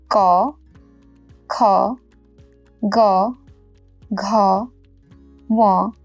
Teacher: Voiceless stop, which is known as Aghosa, followed by aspirated, which is known as Mahaprana, counterpart, and then voiced, which is known as Saghosa, followed by its aspirated counterpart. Each column ends with the corresponding nasal. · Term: occlusive consonants